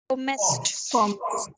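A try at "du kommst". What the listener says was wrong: not comest, comst.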